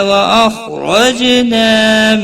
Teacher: خا حروف مستعلیہ میں سے ہے، پور پڑھا جائے گا، اس کو ہلانا نہیں۔ را زبر کی وجہ سے پور پڑھا جائے گا، جیم ساکن پر قلقلہ ہوگا۔